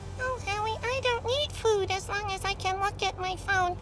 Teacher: capturing his breathy, chronically depressed vocal tone with devastating accuracy